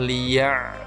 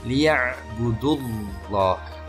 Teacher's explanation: ditebalkan membacanya dengan memonyongkan bibir kita dengan tetap melafalkan huruf lam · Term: tafkhim